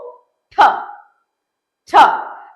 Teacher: upper lip and lower lip will be open, not a wide open, but it will be open. The tip of the tongue alone is go and it touches the alveolar ridge and then comes back immediately. · tip of the tongue அது போய் பின்னாடி alveolar ridge touch பண்ணிட்டு இமிடியேட்டா கீழ வந்து வரும். சோ alveolar ridge touch பண்ணும்போது பாத்தீங்கன்னா ஏர் கம்ப்ளீட்டா பிளாக் ஆயிருக்கும். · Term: plosives